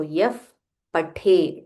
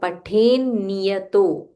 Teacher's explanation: there is a half na and then a full ni